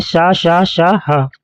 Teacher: तीसरा नंबर है ऊष्म संघर्षी। इन व्यंजनों के उच्चारण में श्वास वायु मुख के अवयवों से रगड़ खाते हुए निकलती है। ये वर्ण है शा, शा, शा, हा।